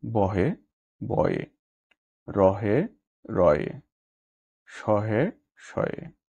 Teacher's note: শব্দে হ ধ্বনির আগে বা পরে যদি স্বরধ্বনি থাকে তবে উচ্চারণের সময় অনেক ক্ষেত্রে হ ধ্বনি লোপ পায়। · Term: শূন্যীকরণ